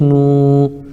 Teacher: واو ساکن سے پہلے نون کے اوپر پیش ہے اس لیے واو مدہ ہوگا، ان کو تھوڑا کھینچ کر پڑھیں